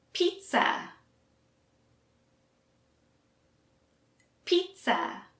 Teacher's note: we don't pronounce the z sound at all it's more of a t and s sound